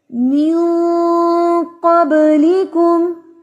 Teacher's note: नून की आवाज को हम नाक में छुपा रहे हैं